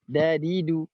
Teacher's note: Nah, selanjutnya adalah ya bagaimana huruf yang ada di ujung lidah mengarah ke pangkal gigi seri atas, itu huruf dal